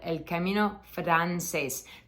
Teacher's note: this R is not a heavily rolled R it's just one one R you just kind of want to make a little Trill a little sound like that with your tongue